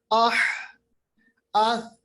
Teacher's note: आवाज पहले हमने तेज की थी मगर धीरे धीरे करके आवाज अब नीचे चली गई, पस्त हो गई, आह आह। सा की आवाज देखिए आह, बिल्कुल आवाज, यानी आप देखेंगे कि आपके मुंह से कुछ सांस तो निकल रही है तेजी के साथ मगर आवाज खत्म हो गई, आवाज पस्त हो गई। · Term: हम्स